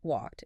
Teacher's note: If the engine is off, like with walk, use a T sound.